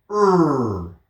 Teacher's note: R is very similar to L, except instead of using the tip of our tongue, we're going to use sort of middle or back of our tongue. So we represent that with our fingers bent over.